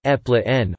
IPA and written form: ˌæpəˈleɪʃᵻn (Appalachian)